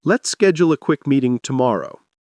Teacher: Practice saying it naturally with a rising tone at meeting and a smooth drop at the end.